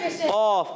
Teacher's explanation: और ये कौफ जो है, ये वाला जो अभी सामने मौजूद है, ये कौफ, ये मोटा अदा होता है जबान की जड़ और तालू के नरम हिस्से से